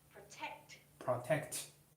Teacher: You keep saying protect, but the stress should be on the second syllable.